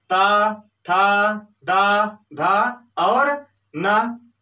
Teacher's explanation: दंत की सहायता से। जब हमारी जीवा जो है दांत में सटता है, दांत को छूता है, तभी ये सभी वर्ण निकलते हैं।